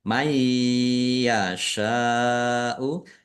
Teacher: Bacaan idgham bighunah masuk dengan mendengung yaitu mendengung ya. Ditandai ya ada tasdidnya ditahan biar tampak mendengungnya.